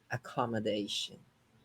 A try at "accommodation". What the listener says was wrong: It wasn't accommodation, it was something shorter, okay? But let's break it down into syllables. Accommodation. It's 5 syllables, and you stress number 4. You stress the fourth. Accommodation.